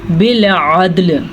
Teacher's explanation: عین کو واضح کریں, دال کا کلکلا ادا کریں. دونوں ساکن ہیں تو دونوں کو ساکن کریں گے.